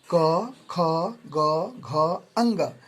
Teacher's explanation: ये कंठ से बोले जाते हैं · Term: कवर्ग